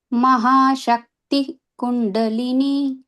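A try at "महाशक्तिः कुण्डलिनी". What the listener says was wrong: Yeah, it is not Shakti, Sakti. Mahasakti Kundalini. So here, if you see, this rule we already saw in some shloka last week. So if this double dot is called a Visarga letter, right?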